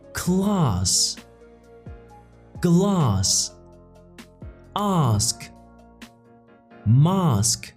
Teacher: Words like class, glass, ask, mask, all pronounced ah in British.